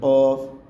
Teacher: قوف کو ہم گلے سے نکالیں گے۔ قوف یہ گرین جو دو نقطوں والا قوف ہے اس کو ہم موٹا کر کے ادا کریں گے۔